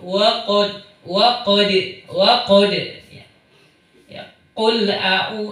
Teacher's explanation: Ini qaf, hurufnya tinggi, lidahnya dinaikkan ke atas, kemudian karakter hurufnya siddah